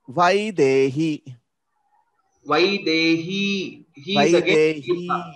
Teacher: all these three letters are Dirgha Swaras. So we will have to give equal time for all of them.